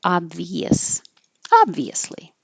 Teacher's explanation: It doesn't look obvious, but after you have the E, obvi, and then you're going to us, obvious, your tongue's going from a high position to a lower position, and it will make that Y